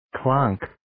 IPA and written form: klɒŋk (Clonk)